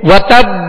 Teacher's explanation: ساکن ہی ادا ہو, اور با کی آواز جو ہے لوٹ کر آئے, یعنی اس میں جنبش ہو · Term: قلقلہ